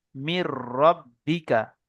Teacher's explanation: নুন সাকিনকে বিনা গুণায় মিলিয়ে তাড়াতাড়ি পড়তে হবে। একে ঈদগামে তাম বা বেলাগুন্না বলে।